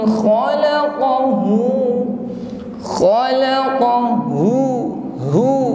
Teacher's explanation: Min nutfatin khalaqahu, khalaqahu, hu, jelas suara keluar dari makhraj aqsal halqi, tenggorokan paling bawah, hu, tidak boleh ngambang.